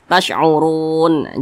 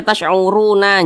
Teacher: huruf nun ini kita sukunkan atau kita matikan ketika kita berhenti di huruf yang tidak dibaca panjang